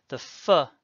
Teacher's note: Without the dagesh, peh makes a much softer sound because air is flowing out